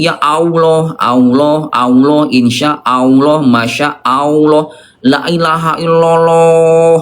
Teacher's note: tebal, diangkat pangkal lidahnya bukan dengan cara monyong, apalagi berubah jadi wawu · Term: lafaz Allah